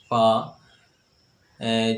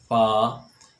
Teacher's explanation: اوپر کے اگلے دونوں دانتوں کی نوک جب نیچے کے ہونٹ کے اندر والے حصے سے لگے، اوپر کے اگلے دونوں دانتوں کی جو نوک ہے جب نیچے کے ہونٹ کے اندر والے حصے سے لگے تو اس طرح فا ادا ہوتا ہے۔ فا دیکھیں، فا جو نیچے والا ہونٹ ہے وہ اگلے نیچے والے دانتوں سے لگ رہا ہے، فا، اس طرح یہ فا ادا ہوگا۔